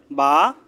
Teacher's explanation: দুই ঠোঁটের ভিজা জায়গা থেকে উচ্চারণ হবে · প্রথমে হলো মিম, 2 ঠোঁটের শুকনা জায়গা থেকে উচ্চারণ হবে মিম। 2 ঠোঁটের ভিজা জায়গা থেকে উচ্চারণ হবে